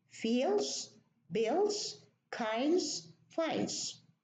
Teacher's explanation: we delete the D, the middle sound, the middle consonant.